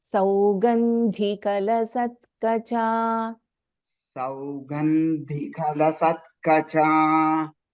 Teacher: Saugandhi Mahaprana Dha, you have to tell little more stress.